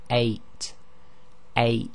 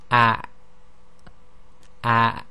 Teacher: It's an abrupt stopping of the airflow at the bottom of the throat. And if you were to say any English word which begins with a vowel and say it very slowly, you actually will hear this sound. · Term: glottal stop